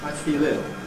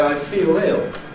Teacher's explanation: I think I'd use a clear L there. I feel ill. But you will hear people say, I feel ill, with a dark L.